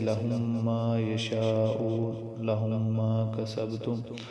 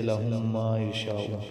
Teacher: اب لہم کی میم ساکن ہے اور اگلی میم متحرک ہے تو ان دونوں کو ملا کر ایک بنا کے پڑھیں گے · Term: ادغام شفوی